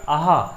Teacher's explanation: इसमें भी आपकी वायु आपकी ज़्यादा आ रही है, इसलिए ये क्या हो जाएगा, आपका महाप्राण हो जाएगा।